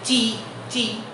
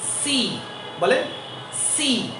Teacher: অনেকের এটা উচ্চারণ করতে গিয়ে সিকে বলে চি চি, নো, it will বি সি।